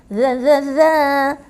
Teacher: yang ini adalah huruf zal, hujung lidah keluar sikit